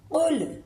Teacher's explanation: قاف کو حلق سے نکالیں گے، لام کو نرمی سے پڑھیں گے قل، منہ کو گول کر کے قل، قل هو اللہ احد۔